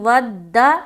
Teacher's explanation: اب چلیں اوپر آ جائیں، یہاں پر دیکھیں ود کثیر، کثیر، واو دال زبر ود، چونکہ دال کے اوپر شد ہے، 2 مرتبہ ادا کریں گے